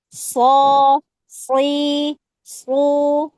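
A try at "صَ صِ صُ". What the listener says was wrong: Jangan pakai itu, pakai bibir. Terus ketika so itu jangan pakai apa ya, kayak dia itu melambat gitu. So gitu enggak, tapi so gitu, langsung terhempas. Dari makhraj ada sifat tapi langsung terhempas.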